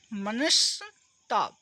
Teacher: विसर्ग के बाद ता आया तो विसर्ग है ना दंत सा में बदल जाएगा